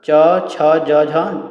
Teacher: जिन ध्वनियों का उच्चारण जीभ के तालु से स्पर्श करने पर होता है उन्हें तालव्य ध्वनियाँ कहते हैं